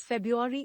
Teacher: Many people drop the first R and pronounce it as February instead of February.